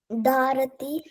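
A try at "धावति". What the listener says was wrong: That is ra. This is va. Davati.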